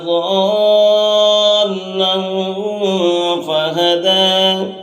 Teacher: ضَالًّا یہاں پر مد ہے، مد لازم، تو مد لازم کو 5 الف کے برابر کھینچ کر پڑھتے ہیں، 5 الف کے برابر یہاں پر کھینچ کر پڑھیں گے۔